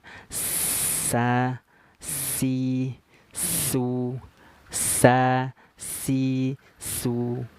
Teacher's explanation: gigi kita rapat Dia desisanya akan keluar pada sela-sela gigi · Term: berdesis